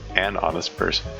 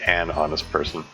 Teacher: Usually you don't pronounce the H in honest, so you say an honest person. As if it starts with a vowel.